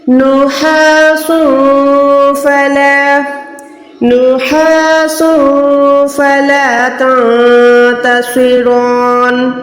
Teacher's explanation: اس تنوین کو دو پیش کو چھپانا ہے